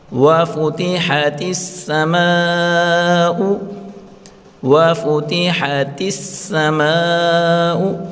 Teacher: تا کو سین کے ساتھ ملا کر پڑھیں گے